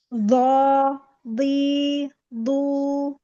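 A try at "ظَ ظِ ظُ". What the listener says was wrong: Makhrajnya berpindah, bergeser. Jangan sampai dia ke atas. Sedikit arahkan ke bawah ke ujung. Terus ditahan, dikuatin. Jadi dia nggak bocor. Tetap ada rokhwah. Bukan lo, li, lu. Itu lidahnya itu kayak memantul-mantul ya.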